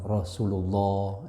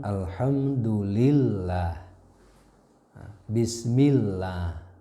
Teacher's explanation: kalau lafaz Allah itu yang tebal berbunyi o, yang tipis berbunyi a